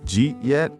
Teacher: The D and the Y mix to make a J sound.